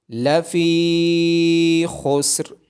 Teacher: فا کے بعد یا مدہ ہونے کی وجہ سے فا کو لمبا کیا جائے گا اور را کی آواز موٹی آئے گی۔